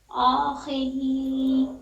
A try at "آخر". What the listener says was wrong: خا پہ بھی آواز دبانی ہے اخی آخی اخی آ نہیں